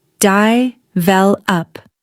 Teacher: >> Many learners say develop but the natural stress is here. di-vel-up The middle syllable is stronger.